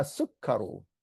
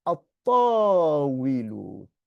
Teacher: So you don't pronounce the lam after the alif.